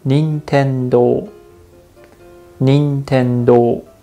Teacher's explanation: In this word, Nintendo in English, the accent is on the second syllable. But in Japanese, you put a little bit of the stress on the first one and say Nintendo.